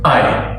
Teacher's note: you have to say I with a little glottal stop, otherwise you're saying something else.